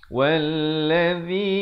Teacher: Jadi waw bari atas terus di atas lam yang bersabdu. Wallazi, zi di hujung lidah. Hujung lidah mesti keluar.